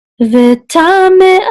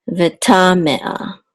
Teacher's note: So it's the second syllable that should be accented.